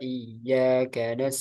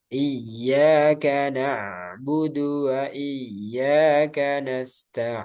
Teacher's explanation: Ain itu dialirkan tapi sedikit